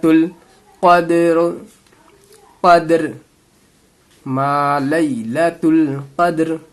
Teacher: تا کو لام سے ملا دینا ہے